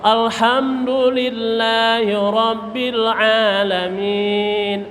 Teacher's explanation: Ainnya ditelan, jangan alamin. Ain telan, ada suara telanan huruf.